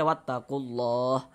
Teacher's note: Huruf lam yang di tengahnya nih, huruf lam jalalahnya ini kita baca tebal, kita baca tafkhim. Sehingga kita baca wattaqullah.